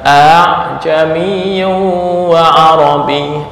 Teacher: artinya suara yang keluar bukan murni hamzah dan bukan murni alif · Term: tashil